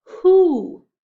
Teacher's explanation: This W is actually silent. You don't hear it. You hear an H first. So this can make it tricky because when we listen, we hear the H.